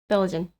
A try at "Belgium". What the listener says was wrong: Belgium. No, you said n with the n. Belgian. You said Belgian. Belgium.